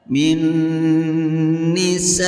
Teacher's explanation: Min nisaihim, him hukum bacaan izhar syafawi karena ada mim sukun yang bertemu dengan huruf ta. Cara membacanya terang dan tidak boleh mendengung.